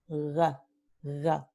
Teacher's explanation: Entonces tenemos en cigüeña la vocal I, la vocal U, y tenemos la consonante velar que se vuelve en aproximante